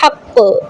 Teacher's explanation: قاف قلقلہ کا اور تشدید بھی ہے تو اسٹرانگ قلقلہ ہوگا